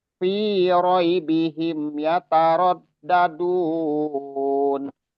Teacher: fi-nya juga nggak gitu panjang, fi-nya dua harokat